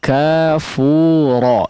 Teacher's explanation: Kafura, ya, fu-nya dipanjangkan